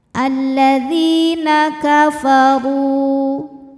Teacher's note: Huruf ro dibunyikan secara tafkhim karena berbaris dommah. Maka dibacanya tebal pangkal lidah naik.